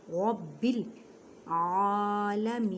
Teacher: با پہ مضبوطی کریں کیونکہ با مشدد ہے